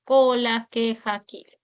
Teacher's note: pueden representar al fonema oclusivo velar sordo